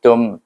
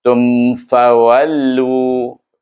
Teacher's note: Tum terus tutup bibir dan baru buka balik semula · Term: izhar syafawi